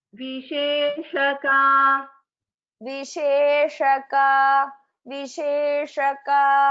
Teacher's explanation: If you also can see, there is a green, the letter highlighted in green color, which is the Murdhanya Sha, which we had discussed in the initial class where we spoke about pronunciation tips. So this Sha is different from Sha, Shiva Sha. So this is a Murdhanya Sha.